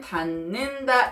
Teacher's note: 마찬가지예요. 비음이 아닌 디귿이 비음인 니은과 만나서 비음인 니은으로 바뀌었습니다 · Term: 비음화